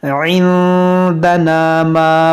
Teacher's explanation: یعنی ناک میں آواز لے جا کر تھوڑا کھینچیں گے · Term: اخفا